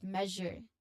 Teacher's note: in measure the stress is on the first syllable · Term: primary stress